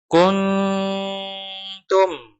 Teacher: Nun sukun bertemu ta. Kun, ketika kita gunnah di kun, lidah siap-siap di makhraj huruf ta. Di mana makhraj huruf ta, ujung lidah menyentuh gusi atas. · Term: ikhfa akrob